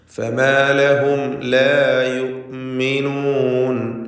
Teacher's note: فما لهم സാക്കിനത്തായ മീമും ശേഷം ലാമുമാണ്. സാക്കിനത്തായ മീമിനെ ഇൽഹാർ ഷഫവി നൽകി മണിക്കാതെ വെളിവാക്കുക.